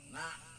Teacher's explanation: Karena nak suaranya agak ke hidung